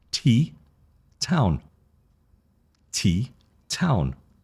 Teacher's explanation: So T, you see how my mouth is slightly open? T, it comes from the tongue at the top of the teeth in the front of the mouth, and there's no vibration.